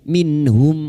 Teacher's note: min nun sukun bertemu ha idhar halqi, nun sukun dibaca jelas tanpa mendengung